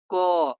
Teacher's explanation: इनका उच्चारण कंठ अर्थात गले से होता है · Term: कंठ व्यंजन